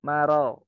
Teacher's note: Ro-nya itu tipis karena dia istifal.